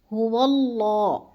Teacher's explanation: اللہ جو ہے اس کو ہم نے پر کر کے پڑھنا ہے